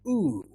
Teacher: lips rounded and long sound